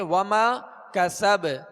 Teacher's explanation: وما کسب با پر زبر ہے، جب ساکن کریں گے تو اس میں بھی قلقلہ ہوگا